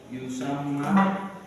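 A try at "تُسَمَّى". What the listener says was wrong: titiknya kan di atas ya.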